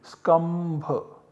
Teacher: And then anuswarasya yai parasavarnaha, this sutra applies, and then this anuswara is substituted by the parasavarna, the savarna of bha. The nasal parasavarna of bha is ma.